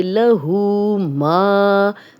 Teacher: الٹا پیش ہے تو 2 حرکات لمبا کریں گے